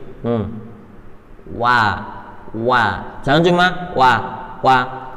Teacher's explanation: huruf wau dari dua bibir yang di monyong kan